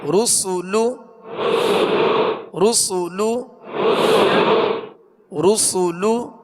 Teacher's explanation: را پر پڑھیں گے، سین کو سیٹی کی آواز میں باریک پڑھیں گے